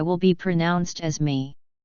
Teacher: in parts of Scotland and northwest England, my will be pronounced as me